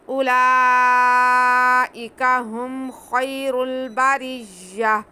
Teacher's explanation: اولئک ہم خیر البریہ، اولئک نہیں، واو ساکن نہیں ہے، بلکہ حمزہ کے بعد ہم نے ڈائریکٹ لام کو پڑھنا ہے، واو سائلنٹ ہے